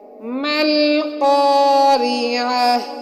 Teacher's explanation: ملقاریعہ میں قاف موٹی ہوگی، موٹے حروف میں سے قاف آ رہی ہے جس کو ہم حلق سے ادا کریں گے، اور اس میں بھی عین حلق کے بیچ سے ادا ہوگی، حروف حلقی میں سے عین ادا ہوگی، اور تا کو ہا کی صورت میں پڑھیں گے۔